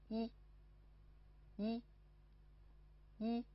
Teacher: 因为发音的时候嘴唇是扁平的，不是张开的，舌尖抵下齿，舌位高抬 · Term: 起齿符